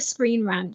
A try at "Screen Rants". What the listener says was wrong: It's not Screen Rant, you animal. It's Screen Rants.